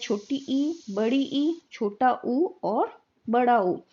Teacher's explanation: इसमें जो है जीभ अधिकतम ऊंचाई तक उठ जाती है। जब अधिकतम ऊंचाई तक उठ जाती है तो जो मुख द्वार है वो क्या हो जाता है, संकुचित हो जाता है। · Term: संवृत्त स्वर